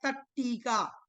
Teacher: तो यहाँ पर ता के बाद में टी आया है, इसीलिए इस ता को भी टा हो गया तो बन गया तट्टी का।